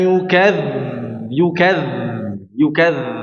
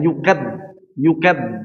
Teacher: Huruf dalal sifatnya rakhawah ya mengalir suaranya maka harus dialirkan suaranya.